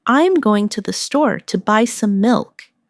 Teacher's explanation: Notice how certain words are stressed. Going store, buy milk.